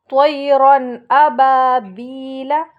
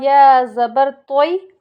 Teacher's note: دیکھیں، تو یا زبر توئی، یا ساکن سے پہلے زبر ہے اس لیے یائی لین ہوگا۔ یائی لین کو نرم آواز کے ساتھ ہم جلد ادا کرتے ہیں